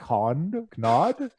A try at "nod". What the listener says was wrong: What? A knod? No, the K is silent. It's a nod.